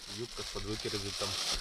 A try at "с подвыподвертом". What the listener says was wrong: С подвыподвертом. Не пердом, а с подвыподвертом.